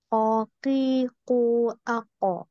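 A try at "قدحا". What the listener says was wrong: Bukan ki, ki, enggak ki, tapi ki bersih tanpa nafas. tanpa nafas.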